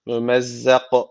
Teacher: Yine bakın dururken son harf cezimli oluyor. K harfi cezim alırsak kalkale ortaya çıkıyor. Dolayısıyla burada kalkale var.